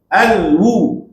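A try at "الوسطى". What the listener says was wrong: jangan putus alwusta tu putus tu al wusta jangan gitu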